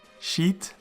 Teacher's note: The Hirek Yod is a long vowel and hence a long syllable, and it is closed because it ends with a Tav.